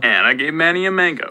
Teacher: I think you can definitely hear the H star on mango. This person put it right at the boundary between the M and the A, which I guess is okay.